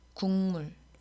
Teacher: 기역은 미음 앞에서 이응으로 교체됐습니다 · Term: 비음화